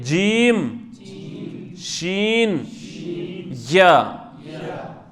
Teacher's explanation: یہ زبان کا بیچ والا حصہ اوپر والے تالوں کے ساتھ لگانا ہے، تو وہاں سے ہم 3 حروف ادا کر سکتے ہیں۔ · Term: وسط اللسان